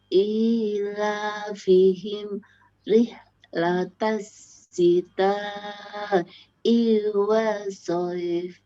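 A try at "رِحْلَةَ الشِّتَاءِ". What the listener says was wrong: Sinya bertitik, bukan si tapi shi. Shita, rihlatas shita'i. Rihlatas shita'i. Rihlatas shita'i, ngoten.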